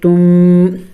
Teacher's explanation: نون ساکن اور تنوین کے بعد جب با آ جائے، جیسے کہ یہاں پہ نون ساکن کے بعد با ہے تو وہاں نون ساکن اور وہ تنوین میم سے بدل جاتی ہیں